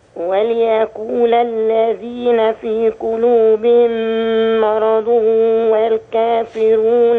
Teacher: أرقق الميم وأفخم ما بعدها من كلمة مرض